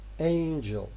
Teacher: It seems that there is a vowel which is being omitted after j. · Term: syncope